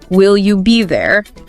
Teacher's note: upward pitch on there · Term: rising intonation